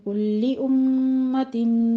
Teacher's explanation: کلی امتم میں میم مشدد ہے، غنہ واجبہ ہوگا، 2 کاؤنٹ کرنے ہیں